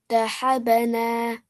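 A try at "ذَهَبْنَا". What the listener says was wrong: Very good. Dhahabna. Dhahabna. You do the bouncing on the letter ba. Good job.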